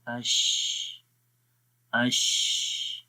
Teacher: تو اگر یہ دیکھیں مثال ہے شین کی، تو ہم شین کی مثال پڑھتے ہیں اش اش، ٹھیک ہے، حمزہ شین زبر اش، تو آسانی کے ساتھ آواز ایک تو سانس جاری ہو رہا ہے، اش سانس جاری ہو رہا ہے، اور آواز میں پستی آ رہی ہے، کمزوری آ رہی ہے، اور دوسرا یہ وائبریٹ نہیں کر رہے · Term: ہمز